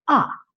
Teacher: It's very, very strong when they say it But the British and the Australians don't tend to say the letter 'R' very strongly and it will sound very much like 'ah'. 'Ah' So it's very, very quick, and it's very, very short, so you may have a hard time hearing it.